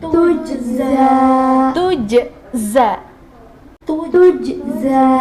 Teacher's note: Jadi yang jim sukun ini diqalqalahkan